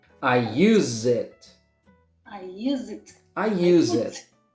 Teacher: The S has a Z sound, and you link it to the letter I, to the word it. Zit, zit.